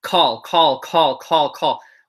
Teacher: When you say call, you should feel a lot of air hit your hand in English.